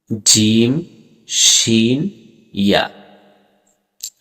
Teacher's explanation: 6 নম্বর মাখরাজ জিহ্বার মধ্যখান তার বরাবর উপরের তালুর সঙ্গে লাগাইয়া 3টি হরফ উচ্চারিত হয়, জিম, শিন, ইয়া। প্রকাশ্য থাকে যে জিহ্বার মধ্যখান 3 ভাবে বিভক্ত। গোড়ার ভাগ জিম, তারপরের ভাগ শিন, তারপরে পরের ভাগ ইয়া